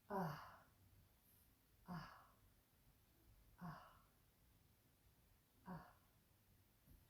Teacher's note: And the visarga is an aspirated sound. It is, it's a sound of pouring forth.